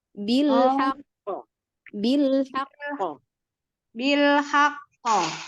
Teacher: ketika memberikan sifat qalqalahnya jangan tunggu terlalu lama ya.